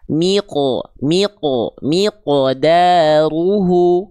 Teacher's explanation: Jadi jangan sampai dilafalkan dengan pantulan yang kurang tebal kadarnya. Karena qof ketika sukun harus selalu dibaca dengan keadaan tebal.